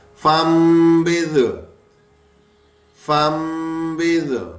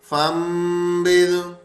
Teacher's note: یہ صرف میم پڑھنی ہے، نون نہیں پڑھنا، کیونکہ نون میم سے بدل چکا ہے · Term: اقلاب